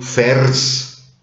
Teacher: Das I fällt aus.